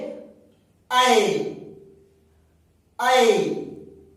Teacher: जब आय बोल रहे हैं तो जिह्वा जो है तालु को ऊपर जाके छू रही है।